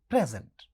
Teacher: जब हम बोलते हैं प्रेजेंट, तो पहला सिलेबल स्ट्रेस्ड होता है